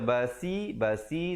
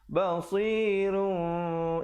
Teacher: basi nanti jadi huruf sin. Yang kita cari huruf sad.